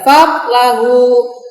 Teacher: Tidak boleh kalian bacanya fadlahu, kan ada mantulnya, atau ada d-nya tadi, itu salah. Jadi ditahan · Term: qalqalah